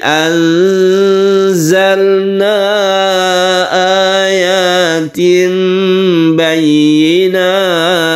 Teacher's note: Bukan eng tapi condong ke za-nya. Ketika kita membaca nun mati kita bersiap membaca za. Kita panjangkan juga karena ikhfa itu juga dengung.